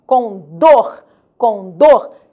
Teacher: A sílaba tônica aparecerá no final. Última sílaba tônica, condor. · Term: oxítonas